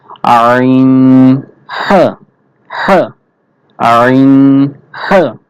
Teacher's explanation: দুই নাম্বার মাখরাজ কণ্ঠনালীর মাঝখান হতে উচ্চারিত হয় দুই নাম্বার মাখরাজ কণ্ঠনালীর মাঝখান হতে উচ্চারিত হবে এবং সেটা গলা চিপে উচ্চারণ করতে হবে